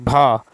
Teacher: हिंदी के स्पर्श घोष महाप्राण ओष्ठ व्यंजन ध्वनि है भ